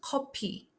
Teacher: The F sound doesn't exist in native Korean, so it's replaced with P. The word is also broken into two syllables, each ending in a vowel, to match Korean phonotactics.